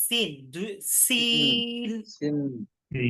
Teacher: জিহ্বার আগা সামনের নিচের দুই দাঁতের মধ্যে